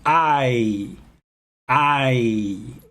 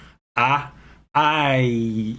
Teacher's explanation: ah in english but you can say i notice how i i start with my jaw kind of down ah i and then i i raise my jaw and my tongue just to say that i